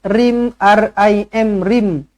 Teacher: Tanwin tak selari bertemu dengan mim sabdu. Jumpa dengan mim sabdu, terus rapatkan bibir. Dengungkan 2 harkat, idgham ma'al gunnah.